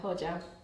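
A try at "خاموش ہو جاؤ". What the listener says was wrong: Not jow though. Not jow. Like very soft.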